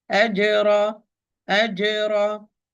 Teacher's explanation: Do not steal, do not stretch. أجرى, here I have jim with sukun, so I'm going to apply qalqala.